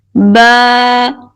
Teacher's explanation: با، ایک الف کے برابر کھینچ کر پڑھیں گے